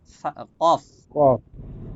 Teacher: লাস্টে কফ, বাতাস বের হবে